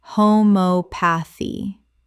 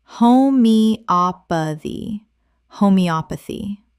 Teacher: The stress falls on the third syllable, op. 5 syllables in total. Example. She tried homeopathy alongside conventional treatment, and while the evidence is debated, she found it personally helpful.